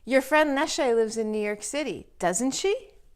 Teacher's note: again the intonation goes up at the end because really it's a yes or no question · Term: question tags